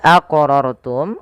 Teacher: wajib kita pantulkan pada lafal huruf q karena ia termasuk daripada huruf-huruf Qalqalah